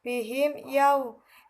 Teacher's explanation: Bihim yau terdapat hukum bacaan idhar syafawi karena ada huruf mim bertemu dengan salah satu huruf hijaiyah yang selain mim dan ba yaitu huruf ya sehingga cara membacanya harus terang atau jelas